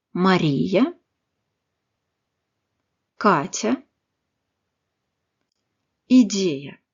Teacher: Le Ya non accentué placé en fin de mot reste en ya, quoique moins fort et moins appuyé que celui accentué.